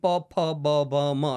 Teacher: પછી ટ, ઠ, ડ, ઢ, તો એ તમારે અંદર જે તાળવે જીભ અડાડીને જ એ શબ્દો આવવાના. પછી પ, ફ, બ, ભ, મ, તો એને ઔષ્ઠ્ય કહેવાય છે